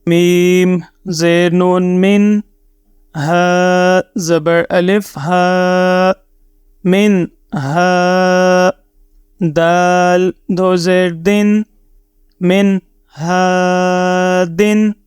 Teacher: اس نون ساکن کی آواز کو اپنے ناک سے غنہ کی طرح نہیں پڑھیں گے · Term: اظہار